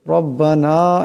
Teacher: রব্বানা এখানে রার উপর জবর আছে, আওয়াজটা মোটা করিয়া পড়তে হবে। রব্বানা এখানে নুনের উপর মদ আছে, আওয়াজটা লম্বা করিয়া পড়তে হবে।